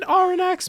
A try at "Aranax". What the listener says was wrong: That X is silent. Just so you know. You don't pronounce the X, yeah.